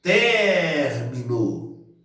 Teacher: Então, ter é a sílaba tônica desta palavra aí.